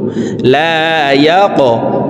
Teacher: وابل فتركه صلدا লাম আলিফ জবর লা ইয়া কফ জবর ইয়া কফ কলকলার হরফ উপরের দিকে ধাবিত করে ধাক্কা দিয়ে উচ্চারণ করব